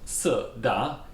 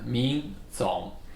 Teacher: which is two falling tone, Si Da, and two rising tone, Ming Zong